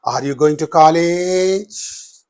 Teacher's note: So rising intonation, and therefore for all yes no questions, the intonation pattern is always the rising intonation. These yes or no questions will receive only the rising intonation at the end of them.